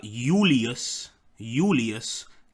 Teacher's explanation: the correct if you were in ancient Rome it would be instead of now with the J the J would become a y in Latin